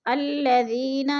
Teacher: الذین، یا ساکن سے پہلے ذال کے نیچے زیر ہے تو یا مدہ، یا مدہ کو ہم نے 1 الف 2 حرکات کے برابر لمبا کر کے پڑھنا ہے